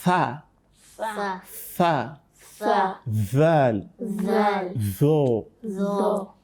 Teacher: These three letters, they come from the same point of articulation. Okay, the tip of your tongue will touch the tip of your upper central upper incisors. Okay, the tip of your tongue touch the tip of your upper incisors. · Whereas thal and tha, it doesn't rise because it is istifal. Okay, the tongue remains below, down there.